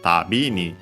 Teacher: by adding then the particle ni, we can hear the accent tabini. Low, high, low.